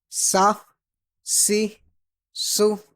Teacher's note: سین میں سیٹی کی آواز نکالیں گے لیکن اس کو پر نہیں پڑھیں گے